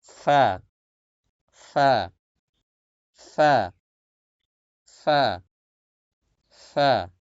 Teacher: উপরে দুই দাঁতটা রাখবেন, ঠোঁটের উপরে দুই দাঁত রাখলেই যথেষ্ট, কামড় দেওয়া লাগবে না